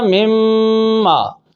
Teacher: نون میم میں داخل ہوا تو اب نون میم میں داخل ہوا، نون کی صفت غنہ باقی ہے، لہذا یہ ادغام متقاربین ناقص ہوا۔